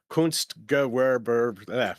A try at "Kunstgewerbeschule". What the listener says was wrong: Kunstgewehr, no, there's no H. Kunstgewerbeschule, which is...